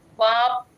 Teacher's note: రెండు పెదాలు మూసేసి ప కింద స్ట్రెస్ పడుతుంది